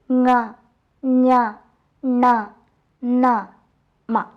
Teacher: മൂക്കിൻ്റെ അല്ലെങ്കിൽ മൂക്കിലൂടെ വരുന്നത് പോലെ തോന്നിക്കുന്ന ഉച്ചാരണമാണ് അനുനാസികത്തിന്.